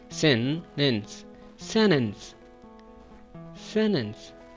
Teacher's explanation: We skip the T sound. We should say N.